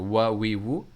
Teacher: دونوں ہونٹوں کے بیچ سے جو ہے واو کی ادائیگی ہو رہی ہے